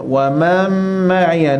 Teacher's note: Nun mati jumpa dengan mim, apa hukum dia? Idgham ma'al ghunnah. Idgham serta dengung.